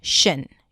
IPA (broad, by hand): ʃən